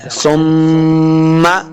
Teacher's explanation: میم مشدد ہے غنہ کریں گے، یعنی اپنی آواز کو ناک میں لے کے جانا ہے